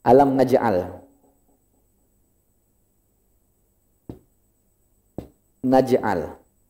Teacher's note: Pokoknya lagi baca ada pantulan, itu qalqalah sugro kecil. Dia mantul, ada pantulan tapi sedikit.